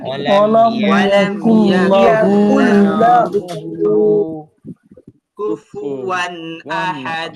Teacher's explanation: কাফটাকে আবার অনেকে মোটা করে পড়ছেন, মোটা হবে না